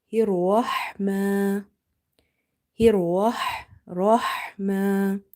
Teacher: Now here Ra is heavy because of having fatha on it. And Ha is from the middle of the throat. So Ha is from the halqiya letters, throat letters, and wherever we see the halqiya letters, we are trying to pronounce them from the halaq, meaning throat.